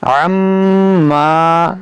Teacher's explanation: یہاں پر غنہ بھی کریں گے, ایک الف کے برابر کھینچیں گے کیونکہ یہاں پر الف مدہ ہے